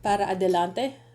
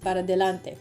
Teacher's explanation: Words blend together, para adelante becomes para delante.